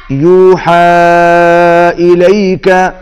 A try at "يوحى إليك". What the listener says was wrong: ہا کے اوپر مد ہے، کھینچ کے پڑھیں گے.